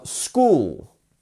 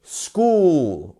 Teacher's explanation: But just keep an eye on the 2 dots here, showing that the ooh sound is lengthened